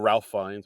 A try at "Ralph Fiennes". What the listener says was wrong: Rafe. pronounced Rafe. spelled Ralph, but it's pronounced Rafe. It's Rafe. it's Rafe. It's Rafe.